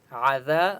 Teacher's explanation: عین کی آواز حلق سے نکالیں گے